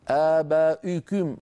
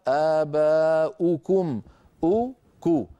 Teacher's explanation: ان واحد ضم للشفتين يصاحبه ارتفاع لوسط اللسان ما الحل الحل ان نضم الشفتين فقط لا نرفع وسط اللسان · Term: الضمه